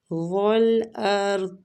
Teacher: والارض، وہ پہ ہونٹوں کو گول کرتے ہوئے، را ساکن ہے پھر بھی ہم اس کو پور پڑھیں گے فتح کی وجہ سے